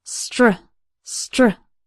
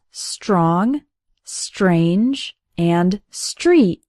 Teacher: STR almost sounds like there's a CH sound in the middle